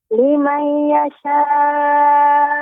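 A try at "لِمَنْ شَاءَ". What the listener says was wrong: Perhatikan. Ya Ummu, tidak ada iya-nya. Liman sya.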